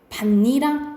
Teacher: 앞에 받침이 있고 뒤에 이 야여요요가 오면은 어떤 현상이 일어나냐면 니은 첨가 현상이 일어나요